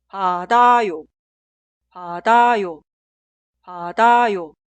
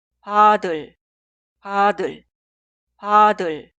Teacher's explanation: En la pronunciación, la consonante final 디귿 se traslada al lugar de 이응 en la sílaba posterior. Pero la ortografía nunca cambia.